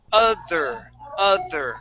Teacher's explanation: you're going to stick your tongue between your top and bottom teeth all right you're not going to stick it out of your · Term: th sound